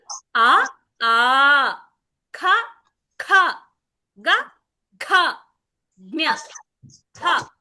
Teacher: ఈ అక్షరాలన్నిటిని కంఠం నుంచి పలుకుతాం కాబట్టి వీటిని కంఠ్యః అంటారు